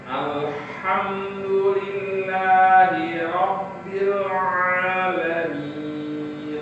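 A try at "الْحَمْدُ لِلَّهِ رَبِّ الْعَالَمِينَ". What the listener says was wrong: tanpa syiddah dal. Alhamdulillah. Coba.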